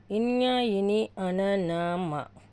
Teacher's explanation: అనునాసికాలు అంటే నాసిక నాసిక అంటే ముక్కు ముక్కుతో పలికేవి